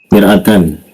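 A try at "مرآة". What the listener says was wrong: Ya, A-nya panjang mir'ah, ya mir'atun mir'ah.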